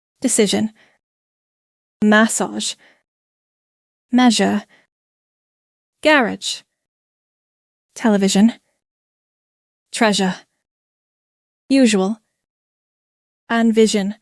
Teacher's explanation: and it sounds like a soft buzzing s